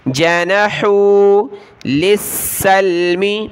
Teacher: لام کو سین کے ساتھ، سین کو لام کے ساتھ ملائیں گے. سین کے اوپر تشدید سختی کے ساتھ پڑھنا ہے.